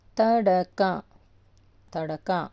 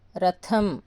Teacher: త మామూలుగా చదివాము ఇది థ కొంచెం గట్టిగా చదివాము మహా ప్రాణాక్షరం